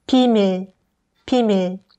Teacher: miim is a nasal sound, so when pronouncing miim, try putting your two fingers on your nose and you'll feel a slight vibration. 비밀, 비밀. So there's definitely a vibration when pronouncing 미음 part, right?